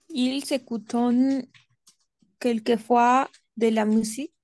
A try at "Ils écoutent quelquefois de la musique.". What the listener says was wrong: Sauf pour aquí, ils écoutent. Écoutent. ENT, on ne prononce jamais. On ne prononce jamais ENT à la fin. On ne prononce jamais ENT à la fin. Ils écoutent quelquefois de la musique. Ils écoutent, attention, d'accord?